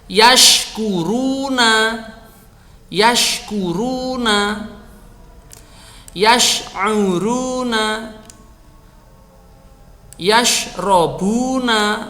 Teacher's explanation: Ingat ketika mengucapkan huruf shin jangan lupa perhatikan tafasyinya atau berhamburnya udara di dalam mulut.